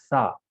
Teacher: سا ایسا ادا کریں گے، زبان کی نوک باہر لیں گے